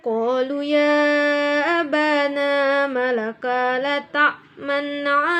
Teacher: mencampurkan bacaan dhammah dengan bacaan sukun disertai dengan gerakan mulut yang dimajukan seperti saat mengucapkan huruf u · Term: isyamam